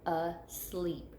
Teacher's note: Okay, so we're going to, when we're sorting our words, we know asleep will go under the second syllable. Okay, we hear that accented E, long E in the second syllable.